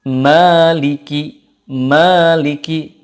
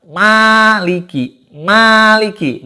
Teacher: ketika bunyi A itu gak boleh dari hidung